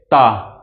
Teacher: जिनका उच्चारण करते समय जो हमारी जीभ का अगला हिस्सा है आगे वाला जो हिस्सा है वो क्या करे दांत को टच करे दांत को टच करेगा वही क्या हो जाएगा हमारा दंतीय व्यंजन हो जाएगा कैसे ता त ता अगर आप बोलते हो तो ता जब बोलोगे तो आपकी जो जीभ है ना वो पट से लड़ेगी आपके दांत से इसके बाद फिर पीछे आएगी। · ता जब बोलोगे तो आप जो जीभ है ना वो पट्ट से लड़ेगी आपके दांत से, इसके बाद फिर पीछे आएगी